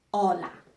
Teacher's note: We don't pronounce the H.